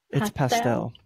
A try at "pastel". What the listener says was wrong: No, it's not pastel. You guys put the wrong emphasis on the wrong syllable. Pastel? Pastel? Like, it sounds like you're trying to say like pasta wrong or something. Pastel?